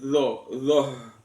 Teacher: Sementara yang zo-nya itu di ujung lidah, nekan pada dua gigi